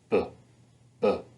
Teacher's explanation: And that's the representation that B and P have the same place of articulation and same manner of articulation. They're both bilabial, meaning 2 lips, and they're stopped, so we get a puff of air coming out. But the B sound is the voiced version, the P sound is the voiceless version.